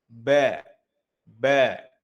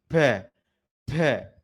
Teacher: Tertahannya udara. Maka saat melafalkan huruf ba hati-hati tidak boleh ada hentakan udara keluar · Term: jahr